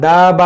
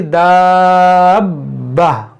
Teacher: बा मुशद्दद भी है, तो इसको बा को 2 बार पढ़ेंगे। बाज़ लोग इसको एक ही बार पढ़ते हैं, दा बा पढ़ते हैं, दा बा, तो ये दाबा नहीं बल्कि दाब्बा, अब डबल हुआ।